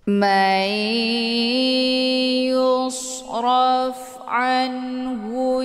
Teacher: cara bacanya nunnya dimasukkan ke dalam huruf ya atau dileburkan dengan cara ditekan kemudian ditahan lebih kurang dua kali ketukan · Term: Idam